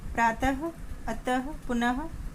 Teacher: विसर्ग स्वर के बाद आता है, इसका उच्चारण हा की तरह होता है